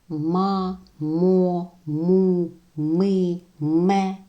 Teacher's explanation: голосні звуки а о у и е роблять приголосні звуки твердими міцними